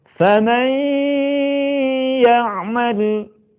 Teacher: kalimat faman ya'mal akan lebih sempurna kalau sebagian suara kita keluarkan melalui rongga hidung. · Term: gunnah